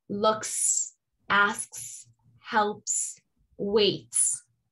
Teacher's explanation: they're all unvoiced, and they create the sound S